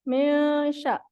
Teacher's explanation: Min sya. Nah, ketika kita mendengungkan ikhfa, itu kita dengungnya itu menyambut ke huruf selanjutnya.